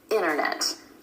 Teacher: Recap on vanishing T. A lot of times that T just drops out with native speakers after the N sound or N sound in an unstressed syllable. · So let's talk about vanishing T. Sometimes in American English, that T just disappears completely. It happens when the T comes after the N or N sound in an unstressed syllable. · the N and the T sound are both made at the ridge behind your top front teeth